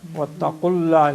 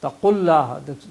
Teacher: there's no waw there in pronunciation, it's only written in writing